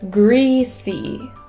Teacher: we want to hold out that e sound because it gives us the feeling that it's greasy